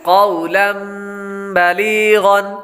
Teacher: पहले लफ्ज़ के अंदर सबसे पहले क़ाफ, क़ाफ हरूफ मुस्तालिया में से है, इसलिए इसको पुर यानी मोटा पढ़ेंगे। क़ाफ के बाद वाव, वाव हरूफ लीन में से है, इसलिए इसको लंबा नहीं करेंगे। आगे लाम पर तनवीन है, तनवीन के बाद बा हरूफ लाम में से आ रहा है, तो इसलिए गुन्ना करके पढ़ेंगे।